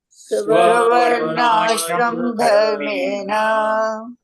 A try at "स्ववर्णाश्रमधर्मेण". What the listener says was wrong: okay swavarnashrama the ashrama, so the ma is complete. Swavarnashrama dharmena